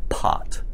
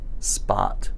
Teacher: you feel a little puff of air when you say the P sound · you feel a puff of air again but it's much weaker than it was in the case of pot